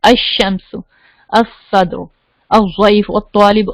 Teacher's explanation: اور جو first letter ہے اس کو تشدید ڈال دیتے ہیں تاکہ پتہ چلے کہ حمزہ کو ڈائریکٹلی سیکنڈ لیٹر کے ساتھ ملانا ہے، لام بیچ میں سے بولنا نہیں ہے